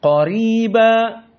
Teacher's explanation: Maka ra di sini dalam keadaan muraqqaqah. Karena kasrah.